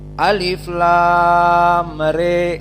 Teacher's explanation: Qiraah Al-Kisai dan Abu Amr hanya 30 derajat naik dari kasrah, menandakan qiraah ini lebih condong kepada kasrah dari fathah.